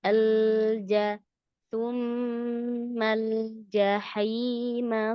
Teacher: Pas lamnya yang sukun umi jangan dilepas langsung ya. Alir sedikit.